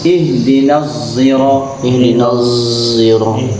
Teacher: Ada qori yang baca ihdinas, tapi tebal, zai yang ditebalkan, bukan ihdinas.